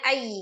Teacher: Anyu dibacanya ay diidgamkan ke huruf ya disertai dengan ghunna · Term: idgham bi ghunah